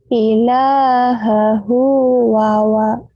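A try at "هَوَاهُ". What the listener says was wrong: Hawa, hawa, bukan wawa, hawa. Ilahahu, ilahahu, hawahu.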